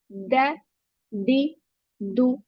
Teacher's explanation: जबान की नोक को ऊपर दो दांतों की जड़ों से टच करेंगे। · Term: दाल